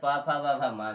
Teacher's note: ओष व्यंजन के अंतर्गत प फ व भ म भी आता है